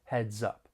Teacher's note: we can link the final consonant sound in heads with the beginning vowel sound in up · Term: linking